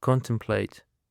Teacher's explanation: Contemplate is of 3 syllables and the stress is on the first syllable.